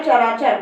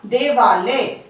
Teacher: चर अ की साउंड आ रही है अ, जमा अचर, अ यहाँ भी छोटा अ है, यहाँ भी छोटा अ है, और यहाँ क्या बन गया, मिलकर दीर्घ बन गया चराचर, बड़ा आ बन गया चराचर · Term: दीर्घ स्वर